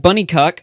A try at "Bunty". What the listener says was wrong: pronounce the t in his name because it sounds like you're saying bunny cuck